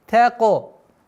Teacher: Та мягкий звук. Она никогда твердое произношение та не будет.